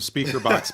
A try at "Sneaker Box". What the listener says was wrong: Sneaker box. Sneaker box. You said speaker box. It sounded like you said speaker.